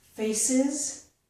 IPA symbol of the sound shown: ɪz